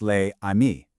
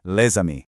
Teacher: if the next word starts with a vowel, that silent consonant suddenly springs to life to link the two words together. So, les amis isn't pronounced les amis. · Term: liaison